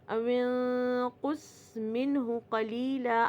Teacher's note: نون ساکن کے بعد ہاں آ رہا ہے تو یہاں پہ نون ساکن اور تنوین کا رول اظہار ہو رہا ہے · نون ساکن کے بعد اگر قوف آئے گا تو نون کا جو اخفا ہے وہ بھی ہیوی ہوئے گا، کیونکہ قوف اور صاد ہیوی حروف ہیں، ٹھیک ہے، قوف اور صاد ہیوی حروف ہیں تو نون ساکن کے بعد اگر قوف آئے گا تو اخفا بھی ہیوی ہوئے گا۔